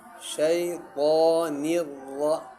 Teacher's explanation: را کو پر پڑھا جاتا ہے کیونکہ را مشدد کے اوپر جب زبر ہو تو اس را کو پر پڑھا جاتا ہے، ذرا ٹھہر کر، ٹھیک ہے۔ · اب نون کے نیچے زیر ہے اور را کے اوپر تشدید ہے، نون کو را کے ساتھ ملا کے پڑھیں گے